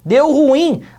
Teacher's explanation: a última sílaba que é mais forte e também será uma palavra oxítona